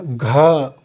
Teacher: घ बहुत तेज आवाज़ आई, यानी घा क्या हो गया, महाप्राण हो गया